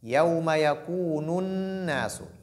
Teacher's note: Yawma yakunun nasu. Ici, c'est nun mushaddada. On doit donc faire ce qu'on appelle la ghunna, le nazilement ou la nasalisation